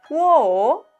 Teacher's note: Wo es yo en chino y tiene tono descendente, ascendente.